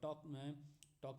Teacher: तो टॉक में जब हम बोलेंगे तो L का उच्चारण नहीं हो रहा है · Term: साइलेंट